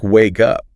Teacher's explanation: And the source material points out that wake up also links. The K sound at the end of wake jumps over and connects to the up.